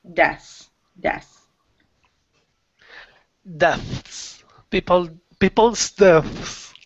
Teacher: when you're saying it quickly, the TH almost disappears. · So you want to say the S, not so much the TH. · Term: THS sound